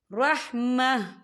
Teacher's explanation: من لدنک رحمہ، یا دیکھیں رحمہ، یہاں پہ آپ کو چھوٹی سی جیم لکھی نظر آ رہی ہے تو یہ وقف جائز کی علامت ہے، تو یہاں پر ٹھہرنا بہتر ہے۔ وقف کی صورت میں تا ساکن ہو جائے گا